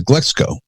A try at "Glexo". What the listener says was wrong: There's no C in Glexo. Glexo. Not Glexco. Glexo. I hear so many people say Glexco. Glexo.